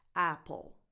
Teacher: apple and then the rest is unstressed so it's not Apple you don't put any weight on the next part on the second part